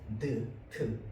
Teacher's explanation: 트는 어디에서 나는 소리냐면 혀끝이 윗 잇몸까지 왔다가는 소리입니다